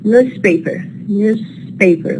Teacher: We don't say newspaper. So za is plus voice becomes sa minus voice, because the neighboring sound here, which is the following sound, it's minus voice.